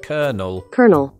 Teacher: Americans will incorporate a postvocalic r in words that don't have one